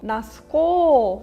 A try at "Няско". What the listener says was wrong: Nya nya nya nya. You want to go nya nya rather than ooh.